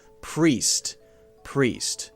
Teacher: when you make the P sound the R is already there waiting for the P to happen right it's there I'm waiting then I just say P and